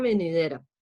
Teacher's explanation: el golpe de voz está en de entonces es una palabra grave